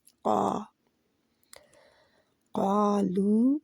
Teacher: قالو، قا اور لو مد لیٹر ہے، مد اصلی ہے، جہاں پہ دو حرکات کے برابر ان کو دونوں کو کھینچنا ہے، جتنا قا کو کھینچنا ہے، اور قا کے ساتھ الف بھی موٹا ہے، موٹے حرف کے ساتھ الف بھی موٹا ہوتا ہے